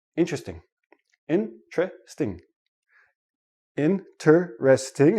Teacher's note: I have 4 syllables. When I actually say it naturally, it becomes 3 syllables, and the T and the R become like a CH